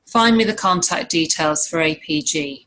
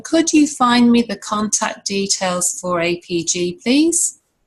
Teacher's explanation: if we rephrase it using a full rise because we're asking a question we start off with a higher tone